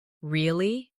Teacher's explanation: with a rising tone to show surprise